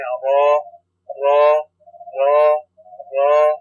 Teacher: सनाया से थोड़ा पीछे आप जबान की नोक को लगाएंगे, हर्फ रा अदा होगा